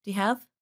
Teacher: The word you becomes reduced to the sound ya.